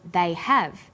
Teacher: stressed the auxiliary verb have · When they are unstressed, the H sound is dropped. But when stressed, the H sound is pronounced.